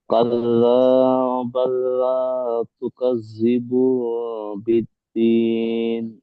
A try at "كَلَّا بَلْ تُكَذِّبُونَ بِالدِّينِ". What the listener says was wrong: দেখেন, কাল্লা বাল্লা বলেছেন তাই না? এখানে বাল্লা নেই, শুধু বাল আছে। কাল্লা বাল তুকাজ্জিবু না